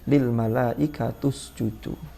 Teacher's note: Usjudu itu kan ada vokal dhammah. Vokal dhammah itu mempengaruhi yang sebelumnya, biar tidak terlalu berat, maka di situ ikut dhammah, maka bacaannya menjadi lil malaikatus judu. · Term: mumatsalah